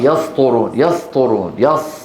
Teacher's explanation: الصالحين الصالحين صوموا صوموا صوموا صوموا المصير خامسا تفخيم السين ايضا اذا فخمت السين و وذلك بسبب مجاوره مفخم مثل الطاء تتحول الى صاد